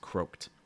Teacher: when you say croaked, you're going to go right from that K to that ED sound